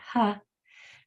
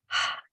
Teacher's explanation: H is voiceless, only air.